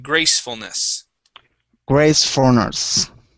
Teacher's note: So the stress is at the beginning.